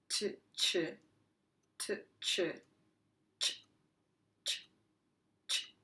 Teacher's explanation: ch is a combination between the letters t when you stop the air and a quick sh sound. So we combine the puff of the t and we extend it a little bit with a sh, but we do it quickly.